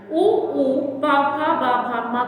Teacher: भ, म का उच्चारण स्थान ओष्ठ होता है।